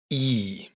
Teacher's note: la i con tilde suena como una i cerrada, mucho más parecida a la del español, pero más marcada